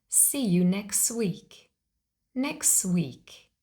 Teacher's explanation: the t is lost that means we delete it we don't pronounce it · In fast speech, we often drop the T sound. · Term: dropped T